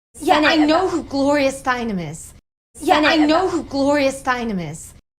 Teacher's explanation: Ending M links right into the beginning vowel, I, of is. Is pronounced with a light, weak Z sound at the end.